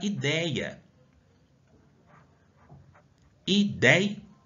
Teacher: Percebam que aqui eu tenho o E e o I, que tem um som aberto. Ideia é um ditongo, porque tem duas vogais juntas aqui. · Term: ditongo aberto